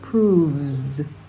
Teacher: the verb is proves with a voiced V